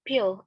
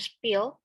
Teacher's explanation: P sound in pill is accompanied by a slight puff of air, that is an aspiration, and the p sound in spill is unaccompanied by aspiration or unaspirated. Aspiration and non-aspiration or some sort of sameness of the two sounds hold in English but not universal.